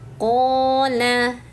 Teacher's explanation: ini qof-nya panjangkan dulu ya. Panjangnya dua harakat. Dan hati-hati nih ketika terputus di sini mesti sambung ke bawahnya.